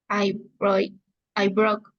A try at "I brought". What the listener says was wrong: No es broke, no es broke, no es una K al final, también es una T. I brought.